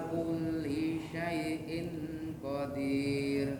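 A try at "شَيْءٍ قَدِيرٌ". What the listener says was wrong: Syai'innya kurang guna ya. Syai'in qadir. Ya. Jadi dilatih untuk gunahnya ya. Dilatih untuk gunahnya biar agak panjang dikit.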